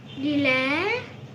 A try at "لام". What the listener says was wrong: دي حركة الفتح. ده لام، حرف اللام لما يبقى. ده حرف اللام، اسمه اللام، ما تقولش لا. الحرف لوحده بتنطقه باسمه مظبوط، اسمه الحرف اللام.